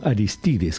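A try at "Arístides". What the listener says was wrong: Soy Aristides, acento Aristides.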